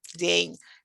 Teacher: n is soft at the end so to say it you need to lift up your tongue a little bit